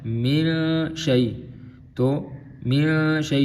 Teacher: اب یہاں پہ دیکھیں نون ساکن ہے، من شیء، تو من شیء یہاں پہ اخفا ہو رہا ہے کیونکہ نون ساکن کے بعد اخفا حرف آ رہا ہے، تو یہاں پہ ہم غنہ کریں گے، نون کو چھپا کے پڑھیں گے۔